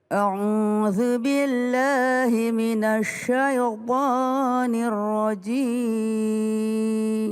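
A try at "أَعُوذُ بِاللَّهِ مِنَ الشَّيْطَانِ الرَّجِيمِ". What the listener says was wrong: Ini banyak terjadi di antara kita kalau bilang sya dimajuin bibirnya. Minasya, salah, keliru. Kalau sya itu tidak maju bibir, jangan minasya. Tapi minasya, senyum aja, biasa aja. Sya, si, syu. Sya, jangan sya.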